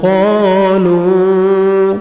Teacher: آمنوا قالوا قاف موٹا کر کے پڑھیں گے، الف مدہ، 1 سیکنڈ آپ نے قاف کو کھینچنا ہے